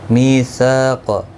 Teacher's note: اس کے اوپر کھڑی زبر بھی ہے، ایک الف کی مقدار کے برابر کھینچ کر پڑھیں گے. میثاق صا الف مدہ ہے، می یا مدہ ہے، دونوں کو ایک ایک الف کی مقدار کے برابر کھینچ کر پڑھیں گے. قاف حروف مستعلیہ ہے، پر پڑھا جائے گا.